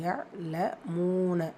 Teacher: மீம்ல வாவ் மத்தா இருக்கு இரண்டு ஹரக்கத் அளவு நீட்டம் கொடுத்து ஓடணும் யலமூன மால வந்து அலிஃப் மத்தா இரண்டு ஹரக்கத் அளவு நீட்டம் கொடுத்து விடணும்